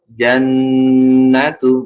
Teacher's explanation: nun sama mim kalau ada tanda tasydidnya ditahan